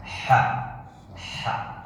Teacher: Memang semuanya udara keluar dari diafragma, tapi ketika dia tempat keluar hurufnya, asal suaranya seakan-akan dia dari tenggorokan. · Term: Huruf H